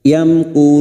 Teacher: Yamkurun, mim sukun bertemu kaf idhar syafawi. Mim sukun dibaca jelas tanpa mendengung.